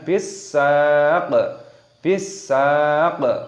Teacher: Qafnya di sini ketika tanda berharokat kasroh, ketika ada tanda berhenti ataupun waqaf maka dimatikan hurufnya, dibaca saq, dan diqalqalah ataupun dipantulkan suaranya